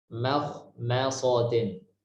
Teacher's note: Mim tipis, kho tebal, mim tipis lagi, so tebal lagi. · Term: tipis, tebal